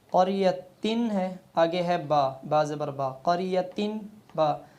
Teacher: یعنی نون تنوین کے بعد چاہے دو زبر ہوں، دو زیر ہوں، دو پیش ہوں، کیونکہ تنوین کی تین شکلیں ہیں، دو زبر، دو زیر اور تیسری دو پیش۔ اب تنوین کے بعد جب با آ جائے تو با اور تنوین کے درمیان میم کی آواز پیدا ہو، یعنی تنوین کو میم میں بدل دیتے ہیں۔